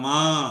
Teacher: যেমন এখানে দেখেন, প্রথম শব্দটা মিম আলিফ নুকরা মা, হালকা নাকে আসবে, বেশি আবার নাকে লাগলে খারাপ শোনাবে। হ্যাঁ, বেশি নাকে নাকি করা যাবে না। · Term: নু গুন্না